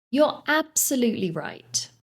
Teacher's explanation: we stress that word absolutely to emphasize our agreement